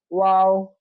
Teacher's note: ওয়াও মাখরাজটা হলো, ওয়াও অক্ষর দুই ঠোঁটের মাঝখানে ফাঁকা দেবো, তাই দুই ঠোঁটের মাঝখানে ফাঁকা দিলে কিন্তু মুখটা গোল হয়ে যাবে। যেমন ওয়াও, এই মুখটা গোল হয়ে যাবে।